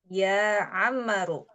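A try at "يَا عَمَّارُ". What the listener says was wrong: Amma, jangan lupa bahwa ada mad di sini, ada mad alif dibuat panjang 2 harokat. Ya Ammaru. Ya Ammaru.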